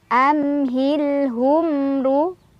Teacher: ada mim sukun bertemu dengan huruf ro cara bacanya mim sukunnya dibaca dengan jelas · ro-nya dibaca secara tafkhim karena ro berbaris dhammah, jadi ditebalkan. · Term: Izhar Syafawi